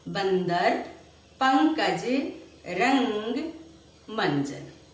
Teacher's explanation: अनुस्वार ध्वनियों के उच्चारण में हवा केवल नाक से निकलती है।